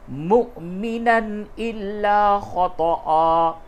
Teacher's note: تنوین کے بعد حمزہ ہے، اس جگہ پہ اظہار ہوگا